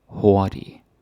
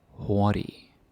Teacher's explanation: And the G is silent. You don't say the G. You don't say hurtig.